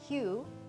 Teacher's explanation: Hu, the vowel sound is long and clear and kind of seems louder, and mun, even though it's spelled M-A-N, you don't really even hear the ah anymore. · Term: stressed